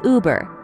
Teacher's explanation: it's a bit like the 'oo' in 'look' but with rounded lips.